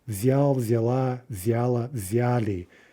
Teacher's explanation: there's that feminine ending taking the stress in the past tense